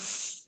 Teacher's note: سین کا آپ کا جو ہمس بھی شو ہو گیا اور سیٹی بھی، اور یاد رکھیے گا جب بھی کوئی حرف، کوئی سا بھی حرف ساکن ہوتا ہے نا تو اس کی جو کوالٹیز ہوتی وہ زیادہ باہر آ جاتی، زیادہ ہمیں اس کو شو کرنا پڑتا ہے، ٹھیک ہے؟